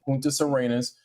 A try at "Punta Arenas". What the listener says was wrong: There's no S on the end of it. It's not about not knowing how to pronounce Spanish words. He's adding an S where there isn't an S.